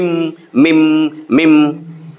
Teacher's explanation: মিম উচ্চারণটা ঠোঁট, দুই ঠোঁট থেকে যেটা এটারে বলে সাফাবি।